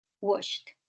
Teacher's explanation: Esa ed se pronuncia como una T